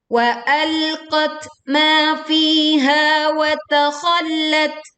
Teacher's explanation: kita menekan pada huruf lam bertasydid lalu berwaqaf pada tak sukun dengan mengalirkan angin